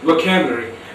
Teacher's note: The stress is on k sound, the second syllable.